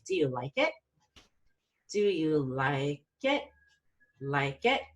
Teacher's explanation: no so this is this is the opposite kind of intonation you're gonna fall on the strongest syllable and then you're gonna rise after it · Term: yes/no questions